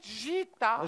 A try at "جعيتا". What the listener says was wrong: في عين بالنص بدك تلفظيها. جعيتا.